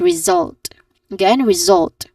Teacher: result, stressing on the second syllable